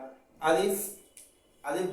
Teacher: আলিফ, হামজা, হা এই তিনটি মাখরাজ মুখের হলকের শুরু থেকে উচ্চারণ হয়